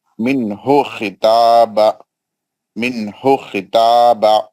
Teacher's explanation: من ہو خطاب، نون ساکن کا اظہار حلقی حروف، اظہار حلقی حروف جسمی ہا. خا حروف مستعلیہ ہے، موٹا پڑھیں گے. تا، تا بھی مستعلیہ ہے، موٹا پڑھیں گے.